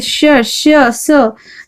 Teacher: आपण ज्या वेळेला उच्चारतो त्यावेळेला तोंडात उष्णता निर्माण झाल्यासारखे वाटते, हवेचं घर्षण तोंडामध्ये जाणवतं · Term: घर्षक वर्ण